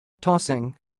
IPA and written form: ˈtɔsɪŋ (tossing)